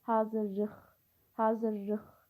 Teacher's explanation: Yəni x samiti ilə bitir. Bu da kar samitdir. · kar samitlə başlayıb, kar samitlə də bitir.